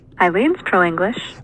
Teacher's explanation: But what I hear is more of an L star here on English. So it kind of bounces down at the bottom there for the first stressed syllable of English.